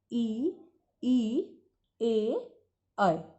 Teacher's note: अग्र स्वर, इसमें क्या होता है कि हमारी जीभ का जो अगला भाग होता है वो क्रियाशील रहता है